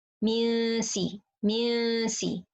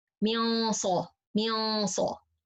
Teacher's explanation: سين is light, so the غنة is light, but صاد is heavy, so the غنة is heavy.